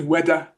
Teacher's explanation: The first one, replacing the th with a d sound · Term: th sounds